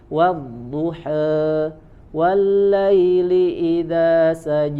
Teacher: imalahnya sugro sedikit saja condong ke kasrahnya hanya sedikit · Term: imalah sugro